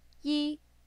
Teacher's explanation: that's a high flat tone in Mandarin this is the first tone now repeat after me ye two is a fast falling tone